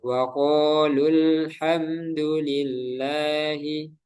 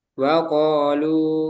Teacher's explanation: Ketika kita baca wasal, maka tidak dibaca panjang matnya. Ketika dibaca wakof, maka baru matnya muncul ya, baru matnya panjang.